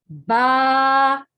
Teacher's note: دونوں ہونٹ مل کے جب منہ کھلتا ہے تو ورڈ با ادا ہوتا ہے